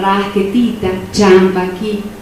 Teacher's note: hay un rasgo también distintivo que es el alargamiento de la sílaba